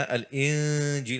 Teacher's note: আল ইনজিল যখন তুমি পড়বে এইটা যেন কোনোভাবেই ইদগামের দিকে না যায়, আল এই হবে না, আল ইনজিল হবে।